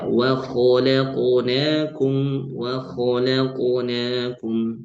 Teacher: Qalqalah huruf qaf jangan sampai ee terkesan seperti ada hamzahnya. seperti hamzah yang diwakafkan ya.